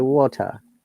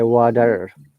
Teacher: The T sounds like D, and they have to pronounce R.